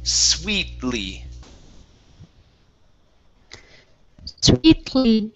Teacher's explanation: You're going to connect the T sound to the L. You're going to use a stop T into the L.